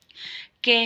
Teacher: तो ये कंठ से बोला जाता, ठीक है, गले से